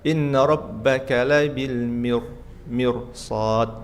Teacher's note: Nah, kalau sudah sebulan sudah lancar, bulan berikutnya naik lagi, dibaca tipis kecuali yang ketemu huruf isti'la seperti mirsad. Setelah ra sukun ada huruf sad, maka ra-nya tebal.